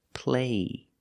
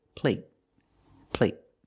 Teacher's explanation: two words play there's no stop T the vowel is longer play there's no stop T so the vowel is longer here play compared with plate plate the stop T makes a vowel shorter